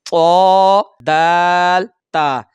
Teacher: हरूफ नितिया जुबान की नोक से अदा होते हैं · यह जुबान की नोक और ऊपर के दांत